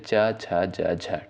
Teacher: च वर्ग के अंतर्गत जितने भी आपके वर्ड आते हैं इनका उच्चारण स्थान तालव्य से यानी तालू से होता है जैसे च छ ज झ ठीक है इनका उच्चारण होता है